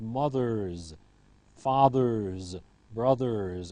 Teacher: the retroflex in English is voiced, and so it's followed by a voiced ending, not mothers, but mothers. · After r, the ending will always be voiced as a z.